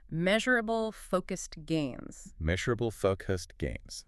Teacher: Measurable, that she sound, and the stress on focused.